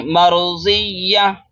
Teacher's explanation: ता दो ज़बर तन है, गोलता है, सांस तोड़ेंगे, ये हा बन जाएगी